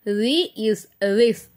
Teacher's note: தால் சொல்லும்போது நம்ம நுனினாவு மேல் பல்லோட ஓரத்தை நம்ம வரசணும்.